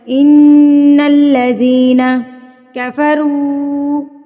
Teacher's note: ان الذین، ان نون کے اوپر تشدید، نون مشدد، تو نون مشدد پر غنہ کیا جاتا ہے، یعنی کہ اس کو ناک میں آواز لے کر جاتی ہیں اس کی ایک حرکت کے برابر.